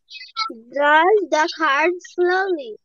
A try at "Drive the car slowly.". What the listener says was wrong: Yes. Drive the car slowly.